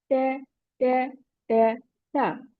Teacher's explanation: Ta sound comes on the tip of the tongue, touches the roots of the upper two front teeth। टंग की टिप को upper टू front teeth की root से touch करेंगे।